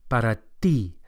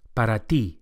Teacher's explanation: the Spanish T is also softer than English and produced with the flat of the tongue against the gum ridge